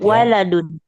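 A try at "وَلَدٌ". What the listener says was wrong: Betul, betul.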